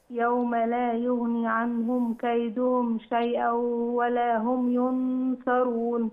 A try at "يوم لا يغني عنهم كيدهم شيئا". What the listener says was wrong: وليها تاني بس زودي الياء في يغني.